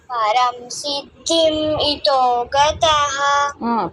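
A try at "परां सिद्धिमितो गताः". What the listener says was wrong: పరాం సిద్ధిమితో, పరం రాకు దీర్ఘం ఉంది నాన్న. పరాం సిద్ధిమితో గతాః.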